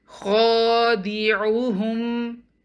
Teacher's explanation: we'll prolong the sound of kha up to 2 counts, and all the remaining letters will be single count